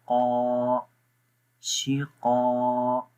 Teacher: شین زیر شی، قاف الف زبر قا، یہ قاف موٹا ہے، ٹھیک ہے، یہ بھی ہم نے اس کا مخرج پڑھا تھا کہ زبان کی جڑ جب تالو کے نرم حصے پہ لگائیں تو قاف پڑھا جائے گا